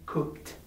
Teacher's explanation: The last sound of cook is k, does not produce vibration